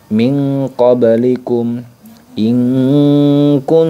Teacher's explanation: Nun sukunnya itu sudah mulai benar-benar samar banget sampai kedengaran berbunyi Ang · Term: ikhfa abad